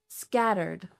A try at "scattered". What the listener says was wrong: I think they would misunderstand you because you're putting the stress on the wrong place. Put the stress on the first syllable. Scattered.